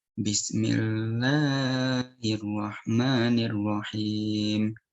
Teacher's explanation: Sebenarnya itu udah benar, cuman mad tabi'inya yang satu panjang, yang satu pendek gitu.